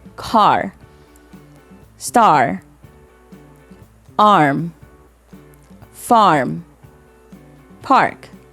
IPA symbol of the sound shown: ɑ